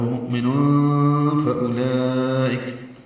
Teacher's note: تنوین کے بعد فا آنے کی وجہ سے اخفا ہے